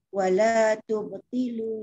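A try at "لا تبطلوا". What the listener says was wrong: La, tak ada wa. La tubtilu.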